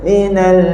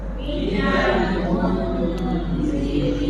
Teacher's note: bila kita sebut Mun tu kita senyum dan keluar lidah kita akan dengar bunyi dengung huruf nipis